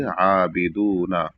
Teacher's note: عین پر کھڑا زبر ہے تو اس کو ایک الف کے برابر کھینچیں گے